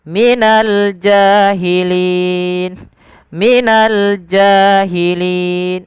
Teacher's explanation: Kemudian pada lafalku ada mad tabi'i, dhamma bertemu waw, minal jahilin, minal jahilin. Alif lam di sini diperjelas karena dia alif lam qamariyah. Ada alif lam yang bertemu dengan huruf jim, yang mana jim termasuk daripada huruf qamariyah, maka kita perjelas huruf lamnya.